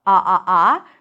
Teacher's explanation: So, you start with an ah sound and then go to an ooh sound.